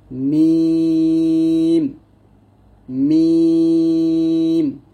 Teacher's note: দুই ঠোঁটের ভেজা জায়গা থেকে আমরা বা উচ্চারণ করব স্বাভাবিকভাবে পাতলা করে বা। দুই ঠোঁটের শুকনা জায়গা হতে উচ্চারিত হয় মিম